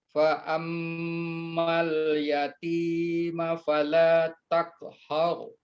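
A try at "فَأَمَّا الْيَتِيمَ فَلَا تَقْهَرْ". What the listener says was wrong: ahsan, barakallahu fiik. Mumtaz.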